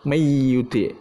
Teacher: huruf nunnya hilang, tetapi dia masih mempunyai sifat gunnahnya. Jadi masih dibaca gunnahnya. Mayyuti. Jadi nun sukunnya itu hilangnya nggak 100%.